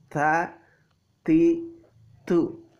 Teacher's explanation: jadi agak ditekan sehingga terdengar berdesis atau keluar angin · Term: huruf ta